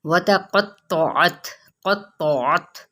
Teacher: ये दोनों कौफ और तौ पुर है